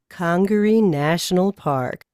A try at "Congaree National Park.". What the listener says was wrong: A little too slow. Yeah, there is a smile.